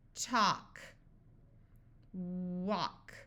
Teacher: so this a will have the broad sound of a but the L will be silent